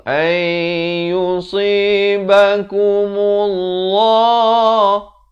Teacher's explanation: Dibacakan lafz jalalah dengan tebal 2 harakat.